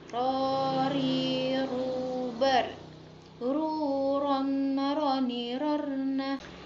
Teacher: huruf ro yang dikeluarkan dengan menyentuhkan lidah di langit-langit bagian depan